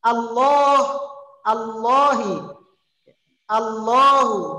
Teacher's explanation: Dibaca tafkhim tebal karena dia berharokat fathah.